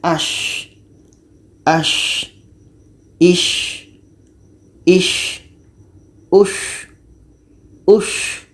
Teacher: Shim ini letaknya pada tengah-tengah lidah, menempel dengan langit-langit mulut. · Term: hamas